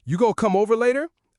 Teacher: The connected speech makes going to become gonna.